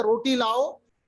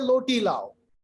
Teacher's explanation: छोटा बच्चा जैसे बात करता है ना, रोटी को लोटी पढ़ता है, लाम वाले को रा की तरह और रा वाले को लाम की तरह पढ़ता। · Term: इन्हिराफ